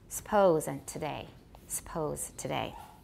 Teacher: Fricatives and stops may become syllabic in unstressed syllables such as suppose